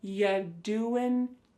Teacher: When we say you doing anything fun instead, you're going to hear y doing ya. The word you is reduced to y.